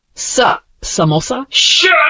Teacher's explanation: notice a slight friction when releasing the air friction friction sounds these sounds are made with continuous friction as the air flows